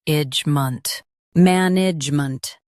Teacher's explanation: Stress man and keep E soft. The G is silent.